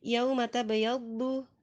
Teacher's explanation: waw sukun di sana sebagai harful lin, tidak berfungsi untuk memanjangkan bacaan, hanya dibaca lunak atau lembut saja